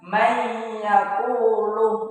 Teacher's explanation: Cara membacanya yaitu memasukkan dengan dengung ya. Nah, jadi di sini ketika ya ini kita tahan dua ketukan ya. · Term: idgham bi gunnah